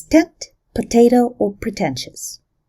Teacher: The t becomes aspirated, that is produced with a little extra puff of air, when it occurs before stressed vowels, such as in the words tent, potato, or pretentious.